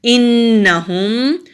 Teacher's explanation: नून मुशद्दद है, गुन्ना करेंगे · हा हरूफ हल्की है, हलक से निकालेंगे।